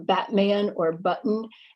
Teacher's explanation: adam's apple or your larynx jump and what ends up happening the air comes up to your throat and then your glottis shuts it off so that's why we call it a glottal stop